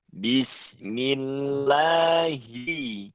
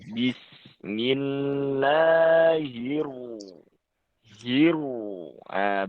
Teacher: ketika hi dan ni itu tidak boleh sampai bunyinya itu miring atau condong ke bunyi ha. Tidak boleh he atau tapi hi-nya itu harus diperjelas lagi.